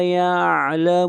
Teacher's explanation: یعلمون پر مد عارض وقفی ہے، اس مد کی مقدار 3 الف ہے